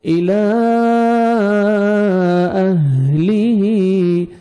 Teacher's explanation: یہ مدہ جائز ہے 3 سے 4 سیکنڈ آپ نے ایکسٹرا کھینچنا ہے لام کو الى اہلیہ ہا پڑھیں گے ہا کو اپنے صحیح